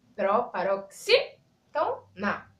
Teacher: A sílaba tônica da palavra é a antepenúltima.